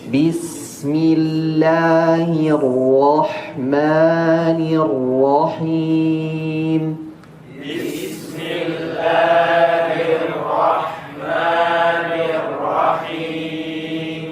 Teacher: Perhatikan di huruf lam di lafzul jalalahnya. Jangan terlalu tebal. Jangan seperti bismil.